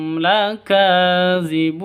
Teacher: Ka panjang 2 ketukan karena ada tanda berdiri di atasnya, mad asli. Zibun panjang boleh 2, boleh 4, boleh 6 ketukan, mad arid lisukun.